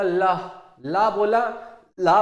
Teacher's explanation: हवा जो है यह बगल से निकल रही है ना जिला ला बोला हमने तो हवा जो है यह बगल से निकल गई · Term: पाशविक व्यंजन